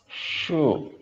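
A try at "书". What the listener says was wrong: Shu panjangin. Shu.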